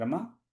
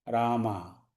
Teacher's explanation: रमा बोलने में कम समय लगेगा। रामा बोलने में अधिक समय लगेगा।